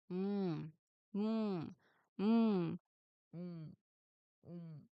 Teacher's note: To produce the sound, you close your lips completely to block the air from escaping through your mouth. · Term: nasal